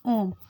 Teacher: प्लुत या त्रिमात्रिक स्वर। इनमें तीन मात्राओं के बराबर समय लगता है। जैसे ओम में यह जो इस प्रकार की आकृति बनी होती है, इसे ओम यह त्रिमात्रिक स्वर होता है।